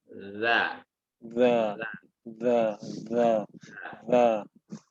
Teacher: lidah yang dia bagian ujung itu keluar sedikit ya, lebih daripada gigi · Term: zal